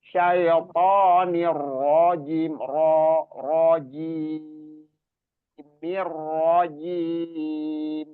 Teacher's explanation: Jadi syaitonir rajim, ro-nya juga dibikin tafkhim. Syaitonir rajim, rajim, rajim, dan dia ada tasdid di ro, itu tadi di ta'awudz.